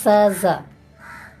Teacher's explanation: पिछली मूर्धा द्वारा उच्चारण किए जाने वाले कॉन्सोनेंट साउंड है